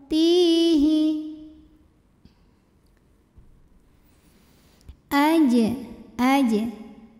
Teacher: huruf Jim yang sukunnya ini sukun asli dan ada di tengah bacaan maka cara membunyikannya dipantulkan dengan pantulan yang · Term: Qalqalah